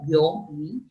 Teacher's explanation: la fuerza de voz recae en la vocal abierta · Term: diptongo